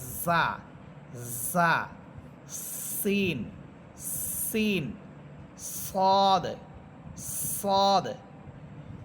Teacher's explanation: জিহ্বার আগা সামনের নিচের দুই দাঁতের আগার সাথে লাগাবেন। আমরা কিন্তু জালেরটা পড়েছিলাম উপরের দুই দাঁতের আগার সাথে, আর জা, সিন, সদ এই তিনটা হরফ নিচের দুই দাঁতের আগার সাথে লাগবে। · আমরা কিন্তু জালেরটা পড়েছিলাম উপরের দুই দাঁতের আগার সাথে, আর জা, সিন, সদ এই তিনটা হরফ নিচের দুই দাঁতের আগার সাথে লাগবে। আর এই তিনটা হরফের সিফাত একটা হচ্ছে চড়ুই পাখির মতো আওয়াজ হবে, ঝিঝি পোকার মতো আওয়াজ হবে। জা, জা, সিন, সিন, সদ, সদ।